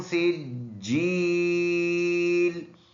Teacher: सीन में सीटी है, जीम पर शद सख्ती से पढ़ने वाला